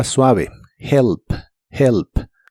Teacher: Listen to music y usaremos el verbo remember que significa recordar la r de inglés es como la r de español pero mucho mucho más suave y la primera e de esta palabra se pronuncia como una I corta